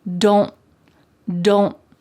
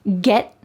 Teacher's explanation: when you hear fast American English speakers, you're going to hear them stop the T in their mouth. So let's take a look at this common contraction, do not becomes don't, but when we pronounce it in a fast sentence, you're more likely to hear don't, don't. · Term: stopped T's